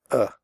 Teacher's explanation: the sound is made with your mouth slightly open and relaxed and without moving your tongue it comes from the throat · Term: the schwa